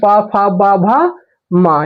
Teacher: प वर्ग में प फ ब भ म यह पांचों वर्ण आएंगे आपका ओष्ठ में।